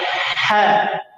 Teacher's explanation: Ha di tengah tenggorokan. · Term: ha muhmalah